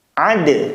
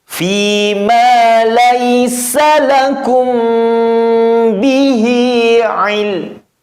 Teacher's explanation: Namun sedikit berkurang kol-kolannya karena harus langsung masuk ke lamnya.